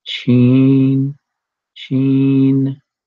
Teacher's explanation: Notice that I'm going through the nasal because of the N.